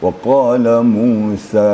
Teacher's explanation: Qafnya harus dipangkal lidah. Ada dentumnya waqala. Tidak boleh ada embel-embel tapi bersih. Bersih tapi besar gitu ya. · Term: huruf qaf